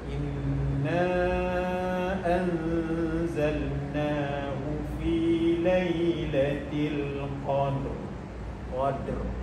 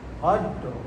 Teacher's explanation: Dia ada bunyi getaran sikit dan getaran itu tebal. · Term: ra mati